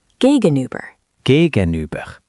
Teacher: The U is like saying E, but with your lips rounded. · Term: That U sound